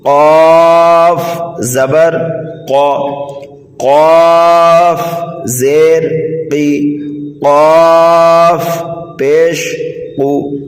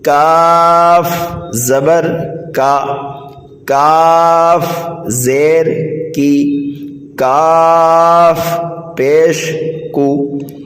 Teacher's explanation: بڑے قاف کو پر اور نرمی کے ساتھ پڑھنا ہے، اور چھوٹے قاف کو سختی کے ساتھ اور باریک پڑھنا ہے۔